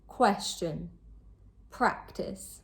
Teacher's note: The stress is placed on the first syllable. These can both be verbs or nouns, but in both cases, the stress is always placed on the first syllable.